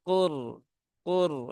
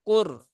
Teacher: kaofnya Huruf tebal maka naikkan pangkal lidahnya dan rnya dia dibaca dengan tebal maka ka Qur Qur ya